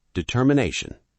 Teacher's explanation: Determination. 5 syllables. The stress is on the 4th syllable, na.